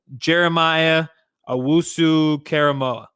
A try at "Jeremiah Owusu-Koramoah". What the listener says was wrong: No, Koramoah. You sound like you're saying Jeremiah Owusu-Caramel.